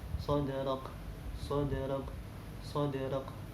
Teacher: Ini ada huruf dal mati, ada huruf dal sukun. Kita ketahui bersama bahwasanya dal termasuk huruf qalqalah. Maka dal ini harus ada pantulannya. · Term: qalqalah sugro